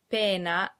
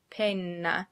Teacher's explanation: pena has one N, a short N sound, and penna has two N's, a long N sound. That little change totally changes the meaning of the word from pena, meaning pain, to penna, meaning either feather or pen, depending on the context.